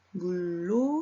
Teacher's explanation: 국물로 소리가 날 때는 국의 기역이 이응으로 바뀌어서 소리가 나는 것이죠. 기역이 이응으로 바뀌는 비음화 현상으로 볼 수 있고요.